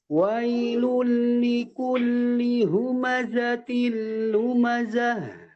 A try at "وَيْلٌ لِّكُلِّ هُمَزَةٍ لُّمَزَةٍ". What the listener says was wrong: Za-nya lebih ditekan lagi. Wailul likulli humazatil lumazah.